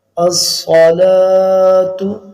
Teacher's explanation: یہ صاد ہے سین نہیں ہے، موٹا پڑھا جائے گا